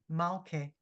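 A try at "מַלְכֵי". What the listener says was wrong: Malche. And she needs a little more phlegm, You didn't sound sick enough. Malche.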